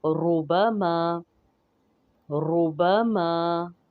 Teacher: جب ضمہ ہو تو را موٹی پڑھی جائے گی